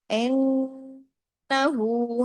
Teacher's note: نون پہ تشدید ہے، ڈبل گنہ ہوا نا تو بڑا ہو گیا